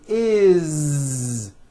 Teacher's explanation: that it's spelled with an S it's never is unvoiced never it's always is with a voiced Z